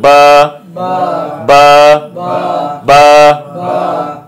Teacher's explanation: দুই ঠোঁট থেকে উচ্চারিত হবে, দুই ঠোঁট থেকে বা উচ্চারিত হবে। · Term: বায়ের মাখরাজ